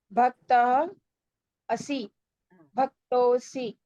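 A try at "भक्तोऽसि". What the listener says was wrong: Correct.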